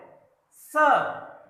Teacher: दंत्य सा, दांत से हमारी प्राणवायु टकराती है